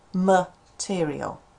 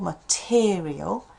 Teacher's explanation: The stress here is in the second syllable